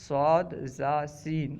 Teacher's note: اور صفیر سیٹی کو کہتے ہیں کیونکہ ان حروف میں سیٹی کی طرح آواز پائی جاتی ہے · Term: حروف صفریہ